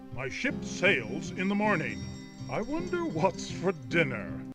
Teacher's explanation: now the thing is that dinner it's a very hard R sound